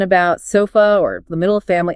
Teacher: It's the lazy vowel. Quick, neutral, and requires almost no movement of the tongue or jaw. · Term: The schwa